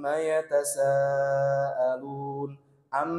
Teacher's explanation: gunah yang ditahan paling lama paling sempurna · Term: Akmal matakun